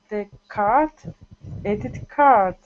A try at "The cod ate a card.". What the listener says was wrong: Okay, so there, I want to focus on cod a little longer because when in a sentence it almost sounds like you're saying card.